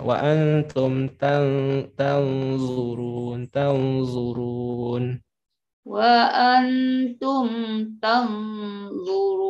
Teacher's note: Tanya tipis, zonya saja yang tebal.